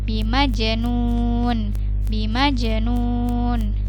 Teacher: jim sukun, maka dia terpantul, dia hukumnya qalqalah